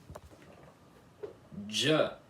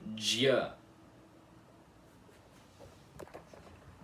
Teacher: Vocês se lembram? É como se vocês tivessem que cortar esse som de i semivogal no dia para ele se transformar em J